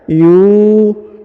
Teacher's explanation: Huruf yu dipanjangkan 2 harokat, yu, karena di depannya terdapat waw sukun atau waw mati ya. Yuqinun ya.